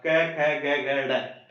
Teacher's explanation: इसमें हमारी जो जीभ है वो कंठ की तरफ जाएगी, कंठ जो गला होता है ना इस तरफ जाएगी। हवा भी शुरुआत में यही से निकल के आएगी। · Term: कै वर्ग